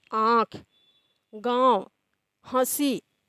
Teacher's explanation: हंसी अब इसका उच्चारण देखि स्वतः स्पष्ट हो रहा है कि नाक और मुंह दोनों की सहायता से हो रहा है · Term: अनुनासिक